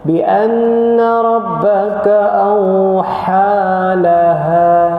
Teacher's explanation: Kena bezakanlah, ha tu lebih dalam, pangkal halkum.